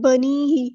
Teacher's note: یا ساکن سے پہلے زیر یا مد آئی ہے تو ایک الف کے برابر لمبا کریں گے